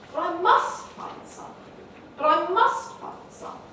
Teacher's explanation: I don't actually have that option, it's all very nice of you to say, but I must find it. And so the focus now is on must, which gives us a contrast between negative and positive polarity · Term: narrower focus